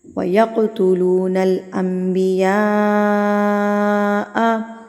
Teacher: اب یہاں پر میں بتاتی چلوں کہ یہاں پر جو تجوید کا رول ہے یہ ہے اقلاب، یعنی کہ نون ساکن کے بعد اگر با آ جائے تو نون ساکن جو ہے وہ میم میں تبدیل ہو جائے گا · یہاں پر قاف کے اوپر ساکن ہے، قاف کے اوپر جزم ہے، تو ہم اس کو ہلا کے یعنی کہ قلقلہ کریں گے